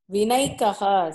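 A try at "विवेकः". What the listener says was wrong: From where you get a naikaha? Nakara, from where you got this? Nakara itself is not there. It is Vivekaha. How you get Vivekaha?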